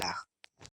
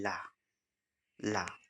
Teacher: पार्श्विक वर्ण में मुख द्वार बीच में बंद हो जाता है और हवा दोनों ओर से निकल जाती है